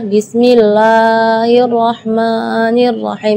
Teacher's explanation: Berlebihan dari segi madnya. Jadi bismillah itu kepanjangan.